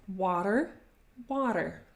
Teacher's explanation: Another tip though I could give you for pronouncing this sound for English speakers is, you know, when you pronounce water, water, the American way, you have this flap against your alveolar ridge.